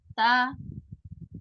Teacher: ujung lidah menyentuh tempat tumbuhnya gigi seri atas ya untuk ta dan to sama.